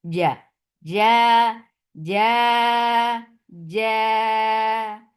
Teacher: The 2 counts long. Ja, Jim has very shidda sound. Like you are not escaping any sound from the makhraj. Ja. If you will let the sound flow, then it will be cha.